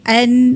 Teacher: kita akan merasa dengung tu yang datangnya daripada batang hidung ni khaisyum ni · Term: ghunnah dengung